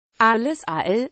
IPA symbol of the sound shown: aʁl